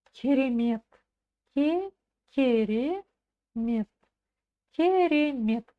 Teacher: ударение на слог Мет на последний слог